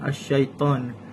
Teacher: Yang kedua ialah hukum lam alif iaitu alif lam syamsiah pada perkataan as-yaitan. Huruf alif lam tidak dibaca jelas melainkan langsung masuk ke huruf syin.